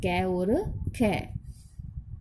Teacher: अब हिंदी के वर्ग में व्यंजनों में पहला दूसरा व्यंजन अघोष होता है